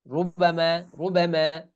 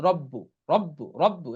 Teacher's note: 5 অবস্থায় রটা মোটা করে পড়তে হয়। 1 নাম্বার, র এর উপর জবর বা পেশ হলে উক্ত র পোর বা মোটা করে পড়তে হয়। যেমন রুবামা ইয়াওয়াদ্দু, এই দেখুন র এর উপর কি পেশ, তাহলে রু, রু, এটা মোটা করে পড়তে হবে, রু, রুবামা, রুবামা।